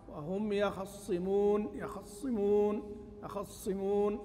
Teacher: بالإسراع بالحركة، خفض صوت مع إسراع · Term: باختلاس الحركة